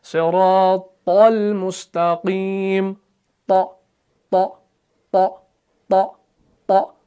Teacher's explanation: तौ जो है ये भी मुफख्खम है, सिफत इस्तिआला भी है, सिफत इतबाक भी है।